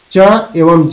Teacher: स्पर्श संघर्षी, फ्रिकेट्स, वे ध्वनियां जो स्पर्श द्वारा पूर्ण बंद के बाद संघर्ष के साथ निकलती हैं, उन्हें स्पर्श संघर्षी ध्वनि कहते हैं।